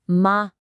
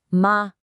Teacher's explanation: This is the first tone. It's high and it's perfectly level. It's like you're holding a single clear musical note.